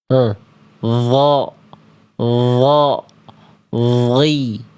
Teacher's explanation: Di ujung lidah ke gigi sari atas kayak huruf dal. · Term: huruf dho